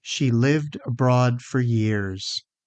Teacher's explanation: There's a clear vibration in lived, which means it's voiced